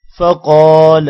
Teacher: قاف موٹا ہوگا قاف کے بعد الف ہے تھوڑا سا لمبا بھی کریں گے